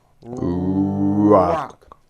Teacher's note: my lips are coming forward and I push out the r sound